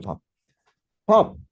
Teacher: 초성이 입술 소리 터지죠. 밥. 바 하고 중성 가다가 끝날 때 다시 입술 소리로 업 하고 끝납니다